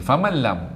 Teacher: Kita baru jumpa nun kosong, macam dengung tapi tak dengung kerana berjumpa dengan lam sabdu. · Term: idgham bila gunnah